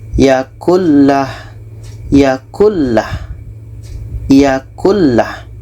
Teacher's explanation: Nun masuk ke lam dan tidak ada dengung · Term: idghom bilagunnah